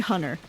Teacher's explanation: no one says the R in that name. It's usually Hunter.